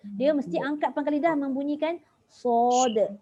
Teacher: Dia mesti angkat pangkal lidah membunyikan sod. Barulah bunyi Arabiah tu datang. Kalau tak bunyi Melayuiyah.